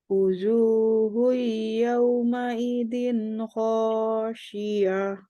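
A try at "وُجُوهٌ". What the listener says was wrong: Wuju, bukan wuzu. Wuju.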